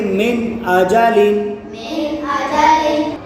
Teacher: نون ساکن ہے، نون ساکن کے بعد حمزہ آ رہا ہے تو یہاں ہم اظہار کریں گے، گنہ نہیں کریں گے۔